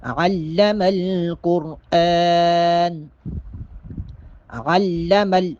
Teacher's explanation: عین کو واضح طور پہ ادا کریں گے، حلق سے آواز آئے